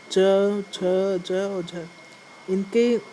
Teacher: और हमारा थर्ड है स्पर्श संघर्षी, जिन व्यंजनों के उच्चारण में पहले, तो थर्ड है हमारा स्पर्श संघर्षी, जिन व्यंजनों के उच्चारण से पहले स्पर्श फिर घर्षण की स्थिति हो।